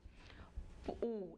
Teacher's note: E com relação ao arredondamento dos lábios, U é arredondada, então é uma vogal. U é uma vogal posterior, certo? Perdão, alta, posterior, arredondada